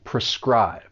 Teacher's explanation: Now this verb has 2 syllables, and the stress is on that second syllable, prescribe.